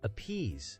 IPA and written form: əˈpiːz (appease)